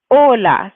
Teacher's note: when we pronounce this word, we say hola. So it's the first part, that's the strong part.